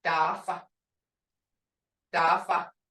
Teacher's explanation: Creek D is unaspirated, sounding to English speakers as though we're halfway between T and D. And I hear a lot of this too, but I hear a T instead of a D.